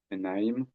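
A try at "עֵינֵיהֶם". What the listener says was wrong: Onyam. Là, ici, le premier kama se prononce O.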